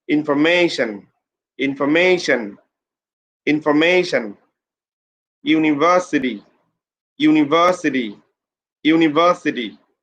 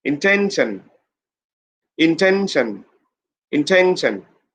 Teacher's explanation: you have to put pressure information information information university university university put pressure on the middle syllable